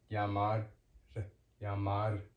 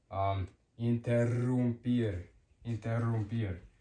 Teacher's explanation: So one is just a quick tap. Two is you roll, it's stronger, and you roll and it's longer.